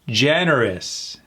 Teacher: And that OU at the end turns into an I sound.